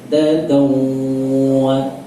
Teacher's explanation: ciri dengung itu selain lama dia masuk ke rongga hidung